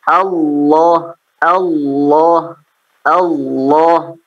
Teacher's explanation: jangan sampai terdengar ada huruf wawu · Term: huruf lam